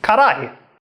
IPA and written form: kaɾai (辛い)